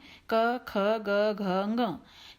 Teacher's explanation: ये पांचों जो वर्ण हैं ये कंठ अर्थात गले से इनका उच्चारण होता है। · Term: कवर्ग